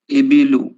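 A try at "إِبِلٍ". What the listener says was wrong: ایبلو کیسے ہوگا؟ ایبلی ہوگا کہ ایبلو ہوگا؟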